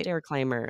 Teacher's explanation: I'm not going to create a vowel in between · it's a soft R because it's preceded and followed by consonants and those sounds squeezed together